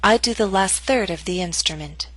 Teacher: Note that primary stress is in the middle of the statement. Your voice will continue to fall after the word third.